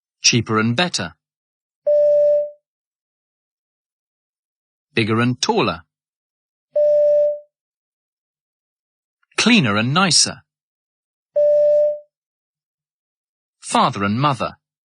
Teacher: Try to link the R with and each time. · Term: linking R